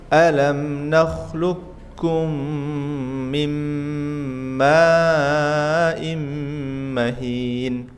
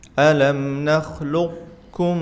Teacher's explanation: Ada yang membaca dengan idgham sempurna, ada yang idgham naqis. Kalau idgham sempurna itu sifat huruf qofnya hilang langsung ke kaf semua.